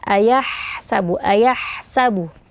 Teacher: huruf ha itu sebagaimana sifatnya mengalir ee nafas dan suara maka dialirkan Terutama ketika sukun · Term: ha sukun